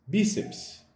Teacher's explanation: A palavra bíceps tem a sua sílaba mais forte localizada na penúltima posição. Então, isso faz dessa palavra uma palavra paroxítona.